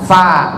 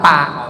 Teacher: Kalau fa, ujung gigi yang bawah nempel ke bibir yang atas.